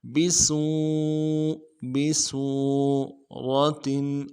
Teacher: سین کو سیٹی والا حرف واضح کریں گے